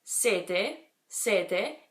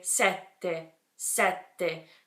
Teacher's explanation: you have to make a little pause before you say the second half of the word